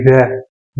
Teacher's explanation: वह का उच्चारण स्थान है दंत प्लस ओष्ठ्य, यानी क्या हो जाएगा? दंतोष्ठ्य।